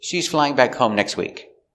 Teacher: is an affirmative statement the intonation goes down at the end we stress important words flying back home and next are all